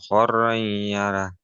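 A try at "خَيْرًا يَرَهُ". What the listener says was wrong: খৈরই ইয়ার, খর রই না, খই, খই খই।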